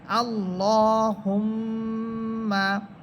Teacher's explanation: হরকতের পরে মিম হরফের উপরে এখানে তাসদীদ আসতেছে, এই জন্য এখানে মিম হরফে গুন্না হবে।